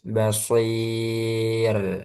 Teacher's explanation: Basir, sodnya tebal, roknya tipis.